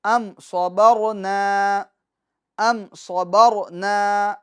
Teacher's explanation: کیونکہ میم ساکن کے بعد نہ تو دوسری میم ہے نہ تو با ہے، بلکہ صاد ہے، ان دو کے علاوہ حرف ہے، لہٰذا میم ساکن کو ظاہر کر کے پڑھیں گے، گناہ نہیں کریں گے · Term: اظہار شفوی